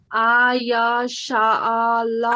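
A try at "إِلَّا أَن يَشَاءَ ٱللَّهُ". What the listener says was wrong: आई, आय नहीं, आई नून मिलाना है उसमें।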